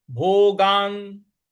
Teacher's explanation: न पर हमको आघात देना है।